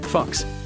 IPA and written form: fɑːks (Fox)